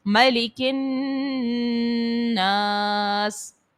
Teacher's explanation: یہاں پر دیکھیے گا بعض خواتین پڑھتی ہیں مالک الناس, میم پر زبر ہے, کھڑی حرکات نہیں ہے, تو اس بات کا خیال رکھیں, میم کو جلدی سے پڑھنا ہوتا ہے. اس کے بعد نون مشدد ہے اور غنہ کریں گے, الف سے پہلے زبر ہے تو الف مدہ, اس کو ایک الف کے مقدار تک کھینچ کر ادا کریں گے